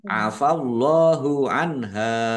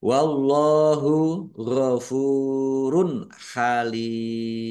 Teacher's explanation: Allahnya dibaca tebal karena harokat di depannya fathah